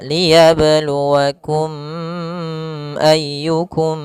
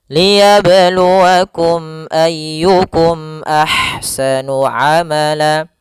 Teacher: Sehingga kita membacanya adalah mim itu makhrajnya daripada bibir kita. Sehingga suara mimnya harus jelas dan tidak boleh ditahan, tidak boleh dibaca liyabluwakum ayyukum, enggak. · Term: izhar syafawi